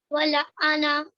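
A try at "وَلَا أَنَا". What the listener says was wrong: वला अना, लंबा करो लाम को, जबर के बाद अलिफ है ना,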